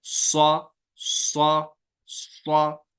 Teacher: یعنی یہ پوری زبان پھیلتی ہے اور تالو کی جانب اٹھتی ہے. اس کی وجہ سے ایک تو یہ پر ہوتے ہیں، پھر اور پر ہوتے ہیں، یعنی ایکسٹرا پر ہوتے ہیں